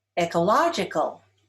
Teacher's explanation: Ecological is stressed on the third syllable.